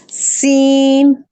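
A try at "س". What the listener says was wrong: नहीं भाभी, सीन, सीटी निकालिए थोड़ी सी। हाँ, आपका सीन नहीं ठीक निकल रहा है।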